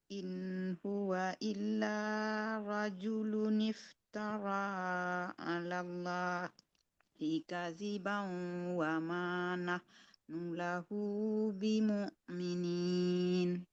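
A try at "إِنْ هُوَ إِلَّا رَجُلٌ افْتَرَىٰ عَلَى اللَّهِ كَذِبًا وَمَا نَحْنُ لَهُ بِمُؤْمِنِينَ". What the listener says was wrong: Iya, bagus.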